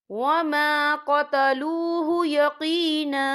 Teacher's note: الا اتباع الظن وما قتلوه یقینا، یا دیکھیں یہاں پر آیت ختم ہو رہی ہے تو جب آیت ختم ہوتی ہے تو وہاں پر وقف کیا جاتا ہے۔ وقف کی صورت میں 1 زبر پڑھا جاتا ہے، 2 زبر نہیں پڑھے جاتے